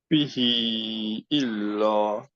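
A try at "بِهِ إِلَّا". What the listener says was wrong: এটা আড়াইয়ের মতো হয়েছে আমি বলবো, হ্যাঁ। এটা 4 হবে, হ্যাঁ। আড়াইটা 3-এর মতো হয়েছে।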